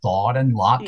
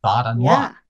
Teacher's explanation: sometimes you pronounce them differently, like /thɔt/ and /lɑt/ and sometimes they're the same